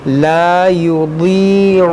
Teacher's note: ضاد یا زیر ضی، اس کو بھی موٹا کریں گے، حروف مشتعلیہ ہے